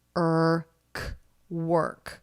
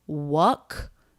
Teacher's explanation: it just blends with the r er work so no wuck no jaw drop we don't need much jaw drop for this sound tip of the tongue pulls back and up a little bit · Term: r vowel consonant combination